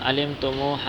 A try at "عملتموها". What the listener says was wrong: اعمالا عملتم علم نہیں